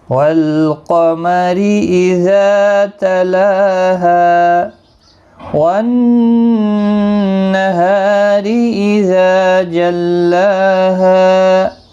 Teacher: نون مشدد پر غنہ ہوگا ، ہا کو ایک الف کے برابر کھینچ کر پڑھیں گے،